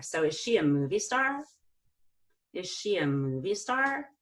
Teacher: movie star is a compound noun where the first part of the compound noun is more important. We're gonna go down on that important part and then up on star.